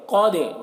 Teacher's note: قد، قاف کو پور پڑھیں گے، قاف حروف مستعلیہ میں سے ہے۔ دال میں قلقلہ کریں گے کیونکہ دال حروف قلقلہ میں سے ہے اور اس کے اوپر جزم ہے